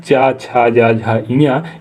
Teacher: तो जो इचू मतलब ई और चा वर्ग का चा, छा, जा, झा, इया, ये सभी के सभी तालव्य व्यंजन है